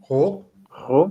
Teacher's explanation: we start R at the start of the word, so a guttural R, ro, with a bit of a weird O, like a O.